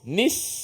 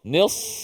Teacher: Jangan nipiskan sa. Sama je bunyi angin dia, cuma sa tu tebal.